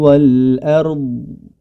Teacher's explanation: memiliki sifat istitalah artinya suara yang memanjang jadi tidak langsung berhenti suaranya